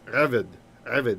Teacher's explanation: And the accent is on the first syllable.